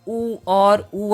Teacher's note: के सारे कैसे होंगे ओष्ठ ध्वनि के होंगे और साथ में छोटा उ और बड़ा उ भी ओष्ठ ध्वनि है